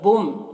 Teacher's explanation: تنوین کو میم سے ملا کر غنہ کے ساتھ میں پڑھیں گے، اس کو ادغام ناقص کہتے ہیں۔